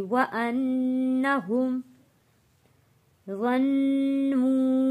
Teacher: غا کو موٹا پڑھیں گے اور غا کو تشدید والے نون کے ساتھ جوڑ کر پڑھنا ہے اور نون پر غنہ ادا کرنا ہے۔ ظَنُّوا واو ساکن سے پہلے پیش ہے، حروف مدہ ہے، تو یہاں اس لیے ہم نے نو ایک الف کے برابر کھینچ کر پڑھا ہے۔